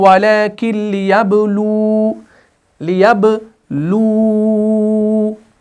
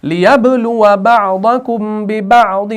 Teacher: لیکن اب اگر آپ نے یہاں پر وقف کر دیا تو لَانتَصَرَ مِنْهُمْ وَلَكِنْ لِيَبْلُوا یعنی واو کو ساکن کر دیں گے وقف کی صورت میں